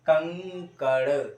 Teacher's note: जैसे कंकड़, मैंने बोला कंकड़, तो इसे सिर्फ नाक पर ही बोझ दिया जाता है, इसीलिए इसे अनुस्वार कहते हैं